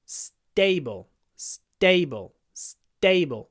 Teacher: we do a S quite a long s a little pause and then say da stable stable stable so it's not like a normal English T · What happens with a s-tut word? We do quite a long s, a little pause, and then say dable. · So it's not like a normal English stable, stable, stable. It's unaspirated after s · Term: s-tut words